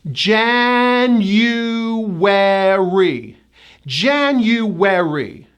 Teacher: There are 4 syllables, and the first syllable gets the stress. There's a hidden Y and a hidden W.